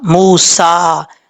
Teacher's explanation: میم واؤ پیش مو، سین کھڑا زبر سا، موسا۔ میم کے بعد واؤ مدہ ہے، ایک الف کی مقدار لمبا کر کے پڑھا جائے گا۔ سین کے اوپر کھڑا زبر ہے، ایک الف کی مقدار لمبا کر کے پڑھیں گے۔